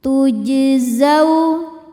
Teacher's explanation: Huruf jim sukun hukumnya qalqalah sugro karena jimnya sukun-sukun asli dan berada di tengah bacaan. Cara bacanya jim dipantulkan dengan pantulan yang kecil. Tujzau. Zau ada hukum harfulin karena ada wau sukun sebelumnya baris fathah.